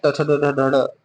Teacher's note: ट वर्ग को मूर्धन्य बोलते हैं